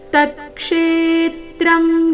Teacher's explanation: ಪ್ರಭಾವಶ್ಚ ತತ್ಸಮಾಸೇನಮೇಶ್ರಣು ತತ್ಕ್ಷೇತ್ರಂ ಮೊದಲು ಪೂರ್ತಿತ ನಂತರ ವ್ಯಂಜನ ತ ಮಾತ್ರ ತತ್ಕ್ಷೇತ್ರ ಕ್ಷೇತ್ರಂ ಕ್ಷೇ ದೀರ್ಘ ಬಂದು ನಂತರ ಆಘಾತ ತತ್ಕ್ಷೇತ್ರಂ ಯಚ್ಚ ಯಚ್ಚ ಯಾದೃಕ್ಷ ದೃ ಮೇಲೆ ಆಘಾತ ಮುಂದೆ ಅರ್ಧ ಕರ್ತಿ ಚ